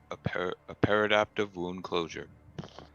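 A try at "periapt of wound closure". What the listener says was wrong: Periapt. There's no D at the end. It's just Periapt.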